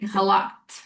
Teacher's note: You kind of swallowed the t on the end, like halaked.